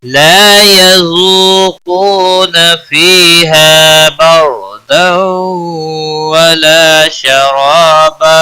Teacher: ذو واو مدہ ہے اور کو واو مدہ ہے، دونوں ایک ایک الف کے برابر کھینچ کر پڑھیں گے ، قاف حروف مستعلیہ میں سے پر پڑھا جائے گا، نا